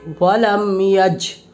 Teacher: اظہار شفوی کو بغیر غنہ کے، بغیر غنہ اخفا کے جلد پڑھیں گے